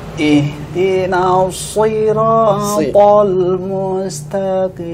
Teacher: Ini harus dibedakan antara shad di kasrah dengan sin di kasrah. Ini shad di kasrah harusnya dia lebih kuat.